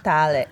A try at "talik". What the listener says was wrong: You extend the ah.